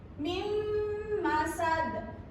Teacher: karena ada nun sukun bertemu dengan mim dan cara bacanya harus dengung. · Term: idgham biuna